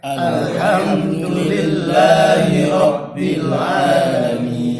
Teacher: Kalau alamin itu kan mad arid li sukun. Bisa kita pakai hukum panjang 4 harokat atau sekalian panjang sampai 6.